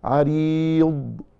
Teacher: جماعة عايزين الأخت الكريمة أو الأخ الفاضل اللي بيقرأ ينتبه معنا للتليفون وهو بيسمع لأن في آيات ذو دعاء عريض قلقلة الضاد وهذا لا يليق. عريض بنمسك الضاد لا تقلقل